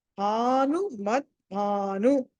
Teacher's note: భాను లో మళ్ళీ భా మహాప్రాణము